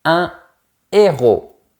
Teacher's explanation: Remarque que je n'ai pas fait la liaison parce qu'il y a un H aspiré.